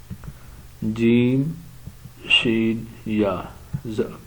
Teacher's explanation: مخرج نمبر 7 جو ہے زبان کا درمیان، یعنی زبان کا درمیان جب اوپر کے تالوں سے لگے تو اس سے جیم، شین یا ادا ہوتے ہیں